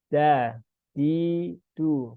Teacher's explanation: huruf dal ya, ujung lidah bertemu dengan gusi ya.